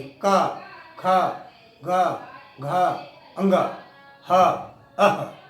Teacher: जब हम इसको महसूस करेंगे तो आवाज, जब का कहेंगे तो कंठ में आवाज टकराती है